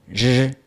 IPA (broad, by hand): ʐ